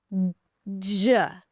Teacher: When they connect together, D and Y, they become J. So the D is a stop sound because the air is stopped and the J is an africate which means the sound is stopped and then slowly released with a friction J.